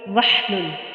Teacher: ہا کو پھر وسط حلق سے ادا کیا